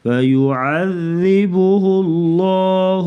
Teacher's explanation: لفظ اللہ کے لام سے پہلے پیش آ گئی تو لفظ اللہ کے لام کو موٹا پڑھیں گے